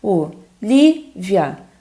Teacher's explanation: Que é o li, né, gente? O li é a sílaba mais forte.